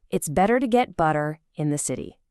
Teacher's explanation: You'll feel how your tongue just naturally wants to flap that T into a D